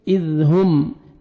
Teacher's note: दाल को नरमी से अदा करेंगे, आगे मीम साकिन का इज़हार है